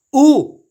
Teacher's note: इन स्वरों के उच्चारण में होठों का आकार गोल हो जाता है · हमारे जो होठ हैं वो गोल हो जाएंगे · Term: व्रतामुखी स्वर